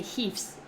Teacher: So if you say heafs, this is because you're ending with a voiceless sound, so you have to use the S sound instead of the Z sound.